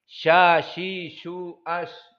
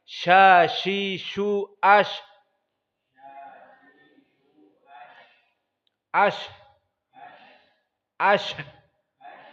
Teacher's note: Dan sya, dia termasuk sifat rokhawah dan termasuk sifat hams.